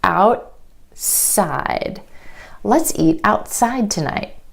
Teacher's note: Instead of outside, outside. The tongue stays up for the T and goes straight into the S sound. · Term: held T